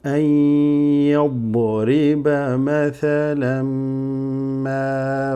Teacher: the meme shadda there means these fathatain are joining with the meme.